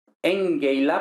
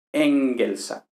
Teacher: desaparece la lambda y para compensar se habla de alargamiento compensatorio. Un alargamiento compensatorio es cuando se pierde un sonido y, por tanto, otro sonido que permanece se alarga, ¿no?